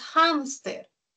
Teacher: tiene la mayor fuerza de voz en hams. Es una grave, ¿no?